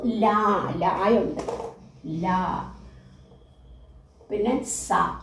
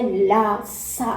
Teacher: ഇതിനെല്ലാം നമ്മുടെ ദന്തത്തിന്റെ പല്ലിന്റെ സഹായം ആവശ്യമാണ് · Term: ദന്ത്യങ്ങൾ